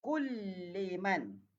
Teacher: Jadi lam jumpa dengan lam. Jadi memasukkan lam yang pertama kepada lam yang kedua. Maknanya diidghamkan.